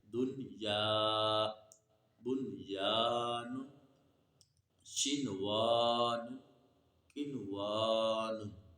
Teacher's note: نون ساکن کو ہم نے ظاہر کر کے پڑھنا ہے، ادغام نہیں کرنا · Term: اظہار مطلق